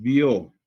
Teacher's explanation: empieza de un sonido de una vocal cerrada hacia una vocal abierta · La O es la vocal tónica y la I es la vocal átona. diptongo creciente.